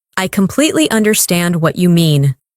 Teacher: Emphasize completely and understand.